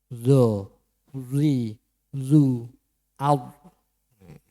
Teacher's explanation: Zo niku tadi ujung lidah menempel di ujung gigi depan. Zo. Kemudian bibirnya di mecucuke.